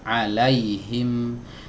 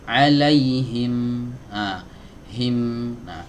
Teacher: huruf mim adalah huruf yang keluar dari dua bibir ya huruf yang keluar dari dua bibir dua bibir yang dirapatkan ya alaihim nah dua bibir yang dirapatkan ini jangan sampai merapatkannya